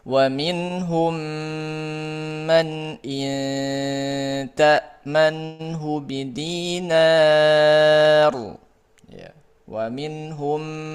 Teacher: Huruf mimnya dimasukkan ke huruf yang mim yang kedua disertai dengan gunah yang dipanjangkan. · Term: idgham syafawi